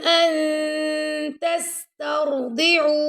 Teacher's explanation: را کو ہم نے تا سے ملایا، ٹھیک ہے. ان یہاں پہ ہم اخفا کر رہے ہیں، نون ساکن کے بعد یہاں پہ آ گیا تا